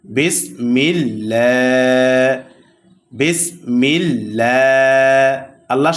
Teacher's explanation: কারণ এই আল্লাহ শব্দের লামের পূর্বে জের আসছে। এই আল্লাহ শব্দের লামের পূর্বে জের আসলে আল্লাহ শব্দের লামকে বারিক অর্থাৎ পাতলা করে পড়তে হয়।